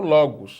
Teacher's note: a palavra logos, tem o acento agudo na penúltima sílaba, que é a sílaba ló, de logos